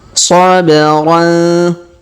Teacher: Perhatikan huruf ba berharokat sukun maka kita pantulkan